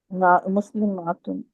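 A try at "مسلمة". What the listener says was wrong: माँ को लंबा नहीं करना ना, माँ में तो फिर अलिफ की आवाज आ जाती है, म। म। मुस्लिम। मुस्लिमतुन। मुस्लिमतुन।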